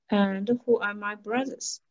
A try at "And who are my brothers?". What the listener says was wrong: Very good. Perfect. Very good.